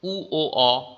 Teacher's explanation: ঠোঁট দুটো গোল পাকিয়ে গেল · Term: কুঞ্চিত